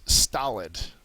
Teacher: The first syllable is accented.